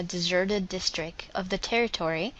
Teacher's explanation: Um, the only errors or if you want to call them errors, the only differences that I found were her pronunciation of district. I didn't hear that final T at all. It was more like district.